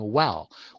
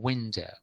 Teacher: There is quite a lot of movement of the lips in w, as in well